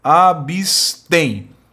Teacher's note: A tonicidade do termo abstém recai na última sílaba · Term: sílaba tônica, oxítona